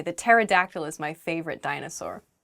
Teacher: Pterodactyl begins with a P, but we don't say the P. It just starts with a T sound.